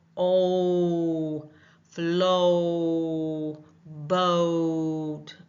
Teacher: it's two sounds coming together to make the long O sound